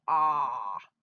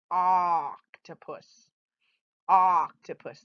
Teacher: if you could see my mouth you would know that i'm holding my tongue way back in my mouth when i say ah it's a very hard dramatic sound octopus octopus so there's the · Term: short sound of o